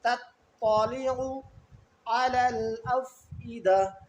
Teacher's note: یہاں تا پہلا جو ہے باریک ہے اور تو جو ہے وہ موٹا ہے